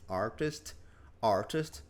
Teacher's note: Os britânicos vão falar mais esse, tendem a falar mais esse T duro de test.